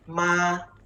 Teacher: the first tone is from 5 to 5. Yeah, from very high to very high, flat.